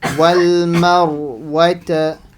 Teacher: So the Ra sakin Ra. If there's a fatha before it, the Ra will be full mouth.